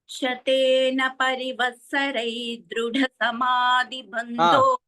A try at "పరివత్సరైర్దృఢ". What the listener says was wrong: పరివత్సరైర్దృఢ. పరివత్సరై తర్వాత కూడా వినిపించాలి. అంటే మొదట్లో, తర్వాత వినిపించకపోయినా పర్వాలేదు.